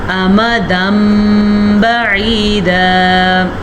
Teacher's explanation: ہم میم جب پڑھتے ہیں تو ہمارے دونوں ہونٹ بند ہو جاتے ہیں اور غنّے کی کیفیت پیدا ہوتی ہے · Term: اقلاب